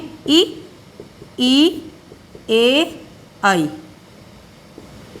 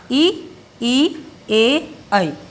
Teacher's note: जिन स्वरों के उच्चारण में जिह्वा का अग्रभाग थोड़ा सा उठेगा, हल्का सा आपको महसूस होगा, वो होंगे अग्रस्वर